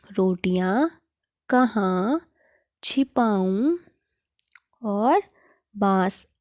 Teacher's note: इन शब्दों का उच्चारण नाक व मुंह दोनों से किया जाता है और इन्हें लिखने के लिए चंद्र बिंदु का प्रयोग किया जाता है। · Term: अनुनासिक, अनुनासिक शब्द